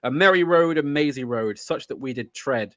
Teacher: It's iambic, certainly. In that it starts off on an unstressed syllable. And it's unstressed, stressed, unstressed, stressed all the way through.